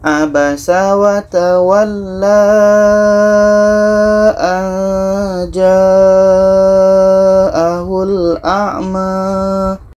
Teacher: Alif kecil Oke contoh walla Nah kita panjangkan dua harakat saja tapi kalau kita teruskan berlaku Mad Jais munfasil kita panjangkan empat sehingga 6 harkat